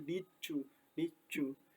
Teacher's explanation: kata you ini diubah menjadi cu karena bunyi dari did ini ketika digabung dengan you. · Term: assimilation